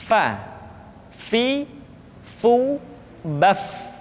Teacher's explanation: Berikutnya, pengucapan huruf fa. Diucapkan dengan menyentuhkan ujung dua gigi seri kita bagian atas dengan bibir bawah bagian dalam. Fa. Seperti kita mengucapkan huruf F di dalam huruf Latin.